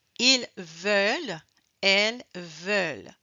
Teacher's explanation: Alors, à cause de la voix de la consonne L, le E est plus ouvert. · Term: E plus ouvert